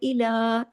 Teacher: इला के ऊपर देखिए लाम पे खड़ी जबर है, इला, एक अलिफ के बराबर खींचेगा